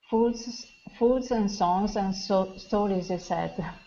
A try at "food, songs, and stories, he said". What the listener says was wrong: That's better. That's better. Good job. Good job.